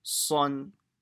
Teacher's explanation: it should not have a w sound in it. So it's not swan, the sw with a w, it's son. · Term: full mouth